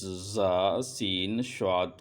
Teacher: ان 3 حروف یعنی ظا، سین، صاد کو ادا کرتے وقت سیٹی کی طرح تیز آواز نکلتی ہے، اس لیے ان حروف کو حروف صفیریہ یعنی سیٹی والے حروف کہتے ہیں۔